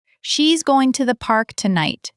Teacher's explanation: We say gonna for going to in casual speech, but even in clear speech to the is reduced. The stress lands on park and tonight. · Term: reduction